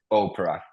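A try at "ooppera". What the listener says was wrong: Really good.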